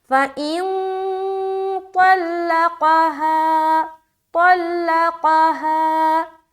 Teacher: نون میں ہم اخفا کریں گے، طا کو موٹا رکھیں گے، لام کو باریک، پھر قاف کو موٹا